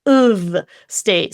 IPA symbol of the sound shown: ə